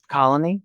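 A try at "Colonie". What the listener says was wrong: It's not pronounced colony, it's colony. It's a little subtle distinction, but colony. So you put the emphasis on the wrong syllable. So you put the emphasis on "ni," so colony.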